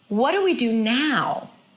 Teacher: Now is really long. What is kind of long. Do is right there in the middle.